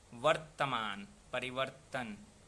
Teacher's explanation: तो अगर संस्कृत के नियम पर चला जाए तो जिस वर्ण पर रेफ आता है उसका जो उच्चारण है उसमें दोहरापन हो जाता है।